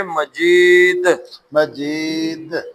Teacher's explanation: کیا قاعدہ یہاں پہ؟ کلکلا دال، دال پہ کیونکہ ساکن ہو گئی تو کلکلا کریں گے